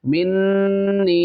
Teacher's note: یہاں پہ ایک الف کی مقدار غنہ کرنا ہے، یہاں پہ ایک الف کھینچنا ہے کیونکہ یہاں پہ یا مدہ ہو رہا ہے